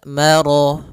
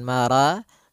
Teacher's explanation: Maka ro-nya tebal, maro, bukan mara, tapi dia maro, sempurnakan lafal ro-nya